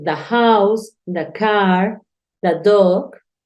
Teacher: este artículo se puede pronunciar de o también se puede pronunciar da. Estas dos opciones son libres.